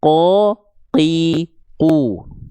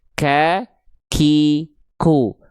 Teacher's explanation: jadi qaf nggak ada nafas, kaf ada nafasnya, gitu ya. Kalau teman-teman melafalkan qaf masih ada nafasnya, berarti tandanya kurang dalam.